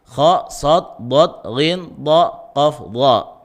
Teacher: Karena bersifat isti'la. Isti'la itu apa? Naiknya pangkal lidah belakang, ya, ke langit-langit